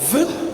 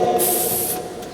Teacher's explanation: the vibration in the production of v would cause a movement in the paper, whereas that will not feature in the production of the voiceless counterpart. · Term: labiodental fricative